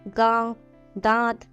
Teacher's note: अनुनासिक वर्णों के उच्चारण में हवा नाक और मुंह दोनों से निकलती है।